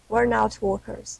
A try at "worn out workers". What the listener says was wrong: Yeah, not warn. Warn is to warn somebody. Warning, warning. Warn, like warn. Same spelling. But not like.